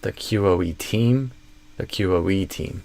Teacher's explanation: I think we're going to stress QoE more than team typically. So the QoE team and the main stress will be carried by the E here.